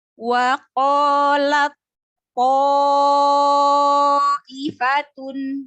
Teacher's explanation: Jadi tak sukunnya tidak dibaca lagi, melainkan langsung ke to yang ditandai dengan tasydid. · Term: idgham mutajanisain